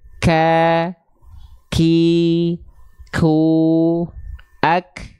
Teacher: hams itu mengalirkan nafas untuk huruf Kaf kadarnya bukan mengalir tapi hanya berupa perecikan nafas